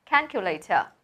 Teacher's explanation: There are 4 syllables and the first one is stressed